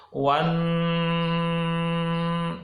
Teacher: Nunnya bertasdid berarti itu gunnah, makanya perlu didengungkan di situ.